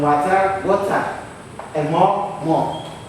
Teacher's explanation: don't pronounce the R clearly after the vowel. However, you can lengthen the vowel and maybe add an O after it. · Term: R in British itu silent